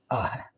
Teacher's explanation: विसर्ग का उच्चारण है वह लगभग ह के समान होता है, किंतु स्पष्ट ह का उच्चारण नहीं होता है